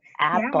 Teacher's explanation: So for apple it's /æ/ sound, not an /eɪ/ sound, right?